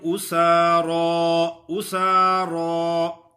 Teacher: لیکن سین باریک ادا ہوتی ہے اور را موٹا ادا ہوگا، کیونکہ را پر جب زبر ہو یا پیش ہو تو را موٹا ہوتا ہے.